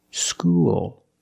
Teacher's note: you used a dark L, because the L is at the end of the word, after a vowel.